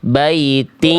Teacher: Ketika dileburkan bunyi tin di sini, bunyi n-nya udah lebur ke ya, itu harus masih ada menyisakan bunyi sifat nun, yaitu berupa sengaunya, dengungnya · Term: idgham bigunah